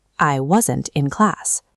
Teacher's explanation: When wasn't or weren't is followed by a vowel sound, like the word in, the final T sound is reduced, making the words connect smoothly.